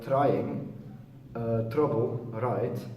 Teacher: the tongue only briefly touches the top of the mouth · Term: alveolar flap